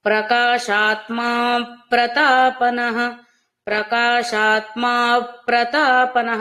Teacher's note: ప్రకాశాత్మ ప్రతాపనః అలా ప్రకాశాత్మ ప్రతాపనః అని రెండు వేరు వేరు పదాలలా కాకుండా ప కి పా వత్తు ఉంటే ఎలా నొక్కిపెట్టి చదువుతామో అలాంటి ఒత్తిడి పకారం మీద తీసుకురండి. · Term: అఘాత ప్రయోగం